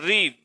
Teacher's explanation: री का उच्चारण स्थान होता है आपका मूर्धा और मूर्धा से इसका उच्चारण होता है, इसलिए इस स्वर को बोला जाता है मूर्धन्य।